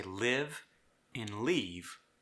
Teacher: if I say live and leave, both of these words in Brazilian Portuguese are leave